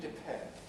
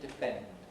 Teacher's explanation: So we do get aspiration in depend, attack, account